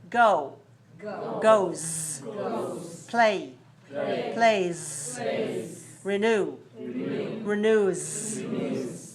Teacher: The base form of the word ends with a voiced consonant and the s ending is voiced.